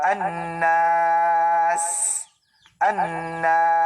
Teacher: ang makhraj or lugar kung saan maglabas ang sin ay sa pinakadulo ng ating dila. Tulad ng annas, annas, at may kasamang hams.